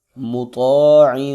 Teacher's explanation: طا موٹا کر کے پڑھیں گے، حروف مستعلیہ میں سے ہے